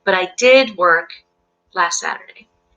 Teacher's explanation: to emphasize but I did work last Saturday you might even put a little extra stress on the word did · You might even put a little extra stress on the word did highlight the emphasis of the contrast.